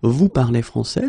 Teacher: we can keep the same order, we just need to raise the voice at the end.